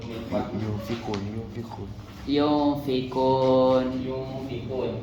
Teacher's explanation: Jadi nun mati bertemu dengan fa. Cara bacanya dengung. Dengung sama-sama dengung dua harakat gitu. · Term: ikhfa